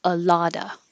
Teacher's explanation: You don't have to say the V on of a lotta